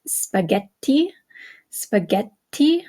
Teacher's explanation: see that double consonant okay such as in spaghetti spaghetti okay you hear how the extra te is is held a little bit longer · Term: double conents